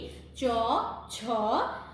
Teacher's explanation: তালব্য বর্ণ মানে তালুর সাথে যে জিহ্বা আছে আমাদের, সেই জিহ্বার মাঝখান বরাবর উচ্চারিত হয়